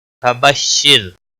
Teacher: را ساکن سے پہلے زیر ہے اس لیے را کو باریک پڑھا جائے گا